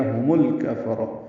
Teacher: باریک ہے، ہم میں ہا اقصی حلق سے ادا کریں گے، میم ساکن تھا، ملانے کی وجہ سے میم کو لام سے ملا دیا